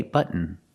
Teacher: you say say button Buton how do you do it well the t is a stop T so you put your tongue up to the roof of the mouth and stop the T stop the air but and then just fall to an N close your mouth